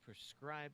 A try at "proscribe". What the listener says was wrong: Proscribe, not prescribe. Yes, but it sounded like you said prescribe, which is, the O was very